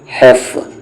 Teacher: پھر ہا آیا بیچ والا حلق